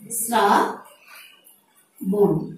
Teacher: কারণ এখানে দন্ত স এর উচ্চারণটি হয়েছে ইংরেজি এস ধ্বনির মতো, অর্থাৎ এখানে তালব্য স থাকলেও উচ্চারণটি হয়েছে ইংরেজি এস ধ্বনির মতো